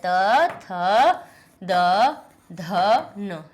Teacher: आपकी जीभ ता था दाधा बोलने में सब में आप दांत से टकराएगी तभी ये ता था दाधा निकलेंगे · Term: ता वर्ग